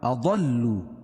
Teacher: ضاد کو موٹا پڑھیں گے اور ضاد کو لام میں ملائیں گے کیونکہ لام کے اوپر تشدید ہے ، تشدید والا حرف 2 مرتبہ پڑھا جاتا ہے اور سختی